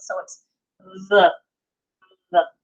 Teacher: Hard, we pronounce it D, like a hard D sound. Soft pronunciation without the Dagesh Lene, it's kind of a buzzed D, a voiced TH, if you will.